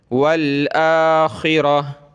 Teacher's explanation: गोलता वक़फ़ में हा बन जाती है